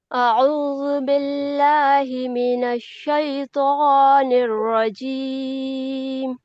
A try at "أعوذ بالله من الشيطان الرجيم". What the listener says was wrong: آپ کا ماشاءاللہ ٹھیک ہے، اور تھوڑی توجہ دیجیے. اعوذ، اس کو کھینچنا نہیں آواز کو. اعوذ باللہ، جلدی سے پڑھیے. اعوذ باللہ من الشیطان الرجیم.